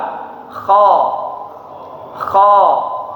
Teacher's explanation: Makhraj huruf kha itu dari pangkal atau ujung tenggorokan, ya, tenggorokan paling atas. Disitulah tempat keluarnya huruf kha.